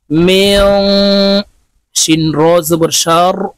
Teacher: মিম নুন সির মিং, নুন সাকিনের পরে ইকফার হরফ শিন আসছে, তাই এই নুনকে নাকের ভিতরে লুকাইয়া গুন্নার সহিত পড়তে হবে।